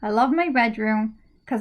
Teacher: because becomes cuz and that's common